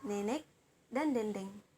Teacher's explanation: Ini termasuk dalam vokal depan, sedang bawah, mulut tidak membundar, dan dalam semi terbuka